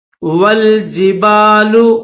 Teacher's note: واو کو لام کے ساتھ ملائیں گے، درمیان میں یہ الف نہیں پڑھیں گے